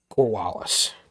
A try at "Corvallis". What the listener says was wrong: Corvallis, I believe, is how it's pronounced, but you were pronouncing it with the German V. That sounds like a W.